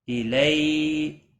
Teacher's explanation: یالین ہے، تھوڑا نرمی کے ساتھ کھینچ کر پڑھیں گے، آدھے الف کے برابر